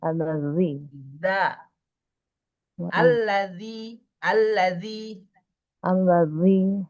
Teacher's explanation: Kalau di huruf konsonannya, di huruf itu ada D sama Z ya. Jadi kayak D dulu tuh, kayak kegigit dal dulu, baru ke Z gitu ya. Jadi za, za, za, Allazi.